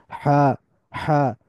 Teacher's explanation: যেটা বড় হা, সেটার উচ্চারণ আসতেছে গলার মাঝামাঝি জায়গা থেকে, যে কারণে এটার উচ্চারণ হইতেছে হা, হা।